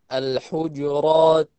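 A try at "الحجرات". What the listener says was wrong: Di al itu jangan L. Jadi juga banyak orang kalau mau al tuh kayak alhamdu mulainya kayak imalah. Bukan alhamdu tapi L. Sama kayak juga ini al-hujurat. Jangan al-hujurat tapi al.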